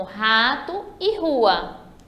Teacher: o R no início da palavra, ele tem o som forte